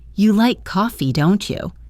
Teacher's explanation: making sure your voice rises just slightly at the end of the tag question to invite a response